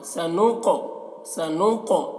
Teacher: یہ قاف کو پور پڑھنا ہے اور قاف کو قلقلہ بھی کرنا ہے قاف میں